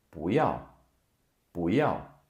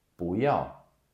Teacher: Another thing, another combination you have to be aware of is 2 fourth tones right after one another. Then the first fourth tone becomes a second tone, and it's usually with 不, meaning no or not.